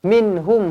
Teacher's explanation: Minhum nun mati izhar halqi, hum mim mati izhar syafawi. Kedua-duanya izhar, kedua-duanya perlu dimatikan dengan jelas. Perlu dimatikan dengan terang, tak perlu dengung.